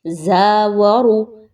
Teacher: زا کے مخرج پہ بزنگ ساؤنڈ آنا چاہیے، سختی آنی چاہیے، جبکہ واو اور را ان کو بہت ہی کم مقدار میں پڑھیے، را کو پر کر کے پڑھیے، اس کے اوپر کوئی حرکت آ گئی ہے اس وجہ سے۔